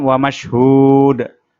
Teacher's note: Kemudian wa mashhud, haknya dibaca panjang dua ayunan, dan di akhir ayat dibaca qalqalah atau dipantulkan.